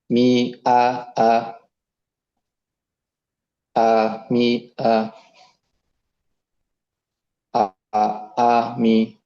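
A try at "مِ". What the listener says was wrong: Kepanjangan. Keseret dikit. Kepanjangan.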